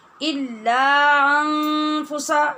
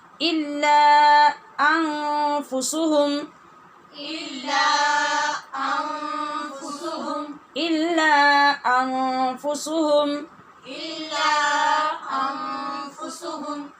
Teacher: جب الف کی آواز ہوتی ہے تو اس کو لمبا کر کے روکا کیجئے اور اس کے بعد پھر دوسری جگہ پہ حمزہ جو آئے گا اس کو پھر سے اپنے مخرج سے ادا کیجئے